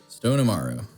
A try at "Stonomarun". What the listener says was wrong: With an N at the end.